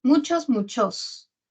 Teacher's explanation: el acento está en mu